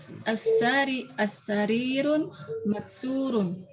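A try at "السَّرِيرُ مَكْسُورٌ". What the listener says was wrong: Pelan-pelan. Kalau ada al-nya, tanwin tidak? As-sariru. Jadi kalau ada al-nya, nggak boleh tanwin, Om, ya. Kalau tidak ada al-nya, tanwin.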